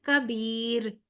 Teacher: را باریک پڑھا جائے گا، اس سے پہلے والے حرف پہ زیر ہے نا